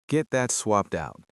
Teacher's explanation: We have a lot of T sounds here, but we do not pop those T sounds sharply. We use what is called a stop T.